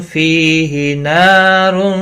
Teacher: تنوین کے بعد حروف اخفا کفا ہے، اخفا حقیقی بھی ہوگا، فی یا مدہ ہے، نا الف مدہ ہے، دونوں کو ایک ایک الف کے برابر کھینچ کر پڑھیں گے